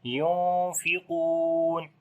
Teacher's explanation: After the noon sakin, the next letter is fa. We make ikhfa, which is the light ikhfa here. Qaf we read in heavy sound, and also we long due to waw madda.